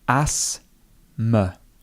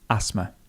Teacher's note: The TH would be silent.